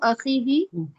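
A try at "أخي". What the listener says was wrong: اخی ہی نہیں ہے، اخی بس.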